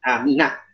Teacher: Walaupun pengen diwasal, maka mesti dihidupkan amina. Jangan aminu, jangan aminu.